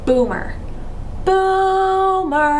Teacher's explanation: we enunciate or Draw out or emphasize that first syllable just a little more than the second syllable